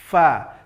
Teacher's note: Huruf fa ini makhrajnya adalah ujung gigi seri atas, tempelkan ke bibir bahagian bawah